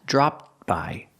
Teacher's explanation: the ED makes a T sound, but it's a stop T, so you don't really hear it.